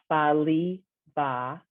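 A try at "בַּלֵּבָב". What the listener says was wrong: So there's 2 dots under the lamed, so that's an A. Balevav.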